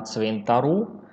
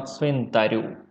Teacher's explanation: Вона оповіла один раз на цвинтару, а другий раз оповіла на цвинтарю. Та один раз на твердо, другий раз на м'ятко.